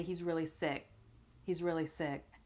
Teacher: you don't necessarily have to pronounce that K sound at the end